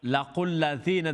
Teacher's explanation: the dhal's going to be long because it's ya madda